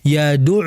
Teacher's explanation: yad'u, kalau kita pegang hidung kita itu tidak bergetar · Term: huruf ain